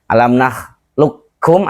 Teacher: Jadi tebal dulu ketemu huruf qaf tapi tidak boleh mantul, kemudian baru keluarnya berikutnya adalah huruf hidupnya berupa huruf kaf.